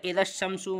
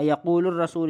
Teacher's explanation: ادغام کہتے ہیں یعنی پڑھا نہیں جائے گا، مطلب لام پڑھا نہیں جائے گا، جو لام سے اگلا جو حرف ہے اس پر تشدید آ جائے گی، جیسے اذا الشمس میں شین پہ آگے تشدید، لام ختم۔